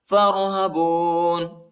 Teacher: فا کو را کے ساتھ ملائیں گے، الف نہیں پڑھا جاتا